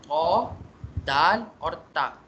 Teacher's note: ये तीनों हरूफ निकलते यहीं से है, ज़बान की नोक और क्या कहते हैं, back side of your teeth , ये जो सेंट्रल टीथ है ना, इनके बैक साइड से।